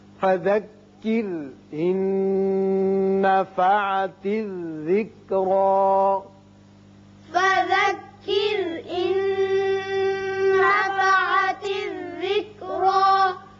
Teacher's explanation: فذکر یہاں را باریک ہوگا، اس کے بعد نون ساکن ہے، نون ساکن کے بعد آگے پھر نون آ گیا، یہاں ادغام غننے کے ساتھ ہوگا